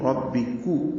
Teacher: کاف باریک ہے اور اس کی پیش معروف طریقے سے ادا ہوگی